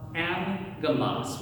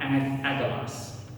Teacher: if you have two g sounds, right, two gamas together, the first g goes to an n sound